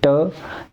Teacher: ट में हमारी जो जीवा रहती है वो पीछे की तरफ मुड़ जाती है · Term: मुर्धा, मूर्धा